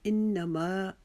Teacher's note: ما کو ہم ایک الف کے جتنا لمبا کھینچیں گے